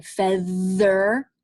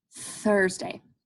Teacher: There's the one where you can put your hand on your throat and make it vibrate, like in feather